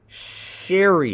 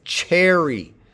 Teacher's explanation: the pronunciation of her name begins with an affricate.